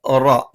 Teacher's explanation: നാവിന്റെ തലയുടെ മുതുക് മേലെ മുൻപല്ലിന്റെ മോണയിലാണ്